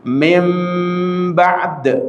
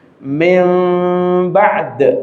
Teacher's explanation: Nun sukun ketemu ba. Maka nun ini yang sukun kita rubah seakan-akan dia mim. Ya kan? Seakan-akan dia mim, seakan-akan mim sukun ketemu ba, sama dengan ikhfa syafawi di sana nanti. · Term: iqlab